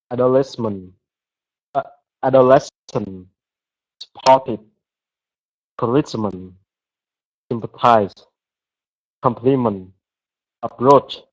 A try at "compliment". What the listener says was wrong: I don't hear the T's at the end. Can you say compliment